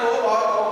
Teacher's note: ओ और ओ को बोलने के लिए हमको 2 अंगों की सहायता लेनी पड़ती है, और वो 2 अंग हैं, एक कंठ और दूसरा ओठ। दोनों होठों की सहायता से और कंठ की सहायता से ओ और औ का उच्चारण करते हैं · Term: कंठोष्ठम